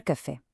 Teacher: A sílaba forte, fé, não só é a tônica, como também recebe o acento gráfico.